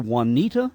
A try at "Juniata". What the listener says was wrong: Yep, the Juniata. Yep, it is a pronounced J. You do enunciate the J, and so it's the Juniata River Valley was one of the valleys, right out there in the mountainous regions of Pennsylvania.